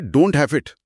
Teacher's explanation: ڈونٹ کا ٹی غائب ہوا اور ایز اٹ جڑ گیا